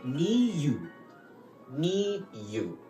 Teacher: higher note, mi, lower note, you.